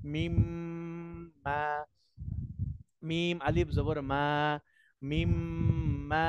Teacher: ওয়াজিব গুন্না হবে, একাধিক পরিমাণ গুন্না করতে হবে।